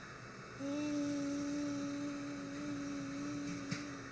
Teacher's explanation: thin voice, almost like a child's voice, high-pitched, breathy